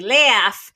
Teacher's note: you tense the a vowel before so-called fricatives which are sounds like s or F